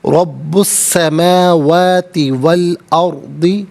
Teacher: رب السماوات والارض، میم کھڑا زبر ما، واو کھڑا زبر وا ہے، دونوں کو کھڑا زبر کے ساتھ بھی اور الف مدہ کے ساتھ بھی پڑھا جا سکتا ہے۔ الارض میں را ساکن ما قبل حمزہ پر زبر، را ساکن کو پر کر کے پڑھیں گے